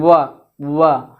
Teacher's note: और जैसा कि आप वा का जब उच्चारण करेंगे तो वा का उच्चारण करते समय ये दांत जो है ओष्ठ से सट जाएगा, स्पर्श करेगा, इसे कहते हैं वा। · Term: दंतोष्ठ